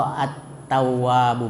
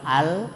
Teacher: Ditasdid pada huruf samsiah tersebut, yaitu huruf ta, sehingga tidak terbaca lagi lamnya, ya, karena dia huruf samsiah. Jadi lamnya itu dimasukkan ke dalam ta sehingga lamnya tidak terbaca. Nah, contoh at-tawwab, bukan al tapi at-tawwab. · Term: idgham samsiah